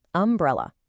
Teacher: The first sound is uh that is a classic clear vowel sound.